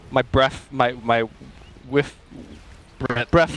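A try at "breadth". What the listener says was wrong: Somehow it comes out breath. I love it.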